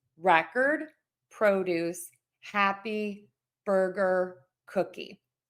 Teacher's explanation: I'm stressing syllable number one and I'm unstressing syllable number two.